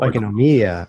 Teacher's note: the emphasis is on the final syllable